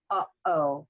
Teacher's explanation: notice that I stopped the air in the back when I hit this hyphen right here, uh-oh, okay? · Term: glottal stop